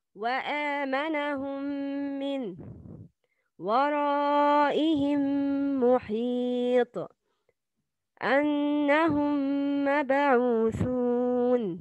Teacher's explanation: If a meme ساكن is followed by a meme, the second meme is pronounced with غنّة, with two beats. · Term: إدغام متماثلين صغير